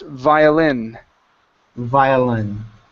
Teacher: the word is pronounced violin violin okay with the stress at the end · with the stress at the end, violin. Violin.